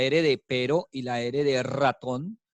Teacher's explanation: Son vibrantes, pero ambas son sonoras.